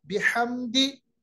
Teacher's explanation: हा हरफ जो वस्त हलक, हलक यानी बीच वाले हलक से अदा होता है